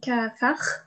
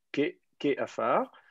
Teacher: Normalement, on doit avoir juste un shfa, ke afar, mais le schwa, il y a deux schwas mobiles qui se suivent. Le premier remonte en voyelle pleine, et du coup, il prend la même couleur.